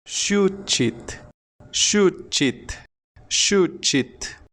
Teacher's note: en fonética se le conoce como sibilante postalveolar sorda y la sh sonaría como un sh como cuando intentamos callar